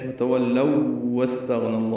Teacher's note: واو کو سین سے ملائیں گے، الف نہیں پڑھیں گے ، سین ساکن پہ ہمس ہوگا، غین ساکن ہے اس پہ · جلدی ادا کریں گے، پھر واو کو لام سے ملائیں گے، لو واو لین ہے، اب واو ساکن ہے اور اس کے بعد واو آئی ہے، ان کا ادغام کرنا ہوگا